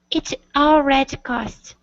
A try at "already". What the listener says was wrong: So what you're doing, those who speak Portuguese have a hard time with the E sound at the end of the word. You tend to cut it off saying already. Okay, add that E sound at the end.